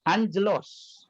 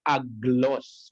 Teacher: gamma yang pertama akan menjadi n